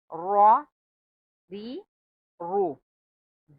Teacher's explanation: را اور رو کو پر پڑھا جائے گا اور ری کو باریک آواز میں پڑھا جائے گا.